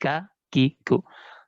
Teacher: Ya, hamesnya lebih tampak ketimbang ketika dia berharokat. Huruf kaf itu kalau berharokat itu jangan berlebihan hamesnya.